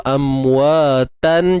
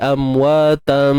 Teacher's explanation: Iqlab ni kan maksudnya tukar, nak bagi tahu bunyi tu amwatan jadi amwatam. Tapi ianya akan berlaku ketika wasal, ketika sambung sahaja.